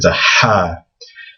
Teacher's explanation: It's almost like the sound that you make when you're taking off your glasses and you kind of blow from the back of your mouth to get to clean your glasses.